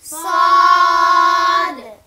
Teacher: জিহ্বার আগা, সামনের নিচের 2 দাঁতের পেট ও আগার সাথে লাগিয়ে শীষ সহ উচ্চারণ করতে হবে।